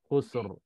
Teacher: Sin mati, lepas tu kha. Kha tu bagi depan juga. Jadi ra tu tebal.